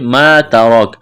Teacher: ما ترک، الف مدہ ہے، الف کے برابر کھینچنا ہے، تا کو باریک کرنا ہے، را کو موٹا کرنا ہے، را کے اوپر زبر ہے، وقف کریں گے، کاف کو ساکن کریں گے۔